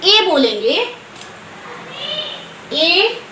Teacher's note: ये कंठ और ओष्ठ दोनों की सहायता से बोला जाता है। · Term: एकार